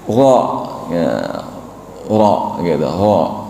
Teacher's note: Ro itu keluarnya dari ujung lidah dekat gusinya gusi atas, dan memiliki sifat takrir atau getaran ringan. Jadi yang disebut getaran ringan, huruf ro ini dibaca, bisa juga dibaca tafhim karena berada dalam kondisi berharokat fathah.